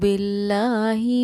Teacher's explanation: देखिए यहाँ लफ्ज़ अल्लाह के लाम से ज़ेर, पहले ज़ेर था तो हमने लफ्ज़ अल्लाह के लाम को बारीक पढ़ा